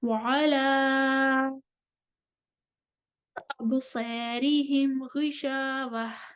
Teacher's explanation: اس کے بعد ورش آ جائیں گے طول لے کر اور تکلیل لے کر۔ ورش کو طول کرنا ہے مد منفصل پر اور ابصارہم پر تکلیل کرنی ہے۔